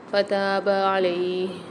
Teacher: تا کے ساتھ الف مد آ رہی ہے، تو 1 الف کی مقدار کھینچ کے پڑھیں گے